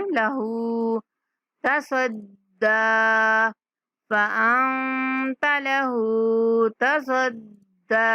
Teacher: ہا کے اوپر الٹا پیشہ کھینچ کے پڑھنا ہے